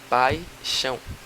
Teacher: O A você fala mais alto que o I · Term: ditongo decrescente